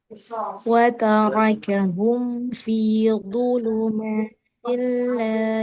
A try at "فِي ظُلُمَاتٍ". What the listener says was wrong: baca filu. Kasih celah ujung lidah, ujung gigi. Filu. Jadi bukan fidu, du. Lu dengan du.